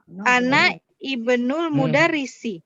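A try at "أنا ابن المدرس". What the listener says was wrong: Ibnu nggak dibaca I. Langsung ke ba. Ana benul. Ana benul.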